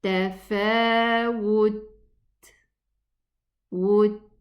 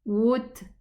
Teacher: we close the makhraj and then we go and pronounce the hams, the whispering sound